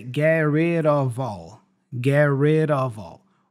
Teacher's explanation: has the flap sound so we go red of red of and then the f is pronounced as a v